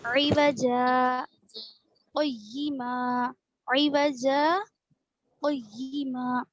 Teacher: यहाँ देखिए, ये दिख रहा है आपको ऊपर से 4th लाइन में दिखा, लम यजअल लहू इवजा, इवजा के ऊपर गोल दायरे के ऊपर क्या लिखा हुआ है, सकता लिखा हुआ है। तो सकते में क्या करेंगे, हम आवाज को रोकेंगे लेकिन सांस नहीं तोड़ना, सांस नहीं लेना, वो एक ही सांस में पढ़ना, आवाज को रोकना।